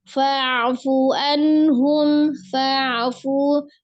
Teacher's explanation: ain sukunnya juga mengalir, jangan terlalu digali